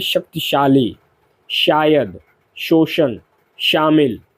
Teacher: तालव्य श इसका उच्चारण तालु से होता है